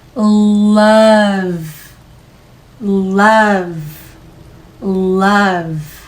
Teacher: 호흡에 얹어서 충분히 늘려주세요. 마지막에 오는 사운드는 유성음이기 때문에 모음에서부터 계속 늘려서 가셔야 됩니다.